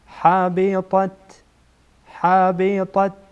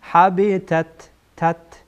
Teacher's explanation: یک طا از حروف استعلا هست پر خوانده میشه تا از حروف استعلا نیست پر خوانده نمیشه